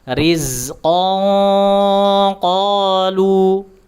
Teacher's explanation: riqon qolu diberikan disamarkan nun nun sakun atau tanwinnya disamarkan terlebih dahulu tanwinnya kemudian ee diarahkan ke huruf qof dan diberikan sifat tebalnya · Huruf qaf makhrajnya adalah lidah pangkal dinaikkan ke langit-langit bagian yang lunak. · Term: dengung ikhfa